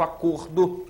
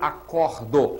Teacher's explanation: o substantivo acordo tem um som fechado o verbo acordo que tem um som aberto